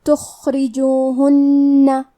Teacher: را کے نیچے زیر ہے تو ہم حرف را کو پتلی آواز میں پڑھیں گے۔ آخر میں نون پہ تشدید ہے لہذا ہمیں 2 حرف کے برابر نون کو پڑھنا ہے، اور ہم یہ حرف کو غنہ کے ساتھ ادا کریں گے۔